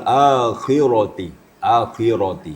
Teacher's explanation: kalau bisa sedikit lagi ketebalannya ro akhir tadi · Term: tafkhim ro